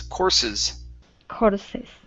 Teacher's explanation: All right, so here, instead of courses, okay, give me an unvoiced S, the first S